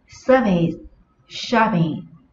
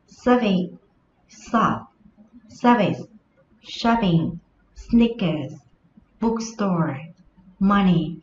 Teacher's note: service, shopping là những danh từ có hai âm tiết và trọng âm của nó rơi vào âm tiết đầu tiên